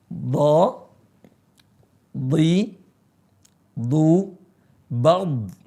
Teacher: sisi lisan ketemu gigi geraham atas. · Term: huruf dha